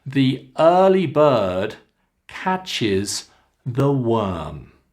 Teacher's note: when we come to the end of ideas, we come down. So our intonation is coming down.